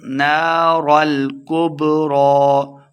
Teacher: با حروف قلقلہ سے ہے, ساکن خوب واضح کر کے پڑھیں گے